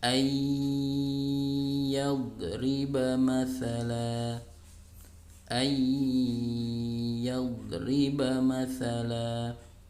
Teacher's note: Kalau ada nun sukun atau tanwin bertemu dengan salah satu huruf yang 4 ini, yanmu, ya, maka hurufnya, nunnya dilebur, nun atau tanwinnya dilebur ke huruf setelahnya, kemudian dibaca dengung atau gunnah